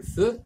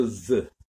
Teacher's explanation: Donc, c'est le trait de voisement, puisqu'il partage plus consonantique, il partage plus oral, plus constrictif, et il partage plus antérieur. Mais il se différencie par feu et moins voix, et veu et plus voix.